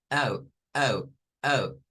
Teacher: Es una A, pero que termina siendo una U. Comenzamos con A, pero termina siendo una U.